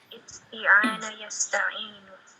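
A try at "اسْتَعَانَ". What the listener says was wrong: Kenapa isti'ana? Kenapa isti'ana? Kenapa isti'ana? Taknya kasroh. Kenapa? Ista'ana, na'am. Ista'ana. Samakan dengan istaf'ala. Berarti na, cuman huruf fa-nya diganti dengan alif di sini. Sama wazannya istaghfara, ista'ana, istaf'ala.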